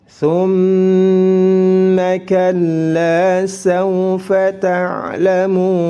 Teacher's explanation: Thumma mim bertasydid ditahan 2 harakat, dihukumi gunnah musyaddadah.